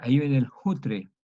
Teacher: No es una J, es como un sonido aspirado.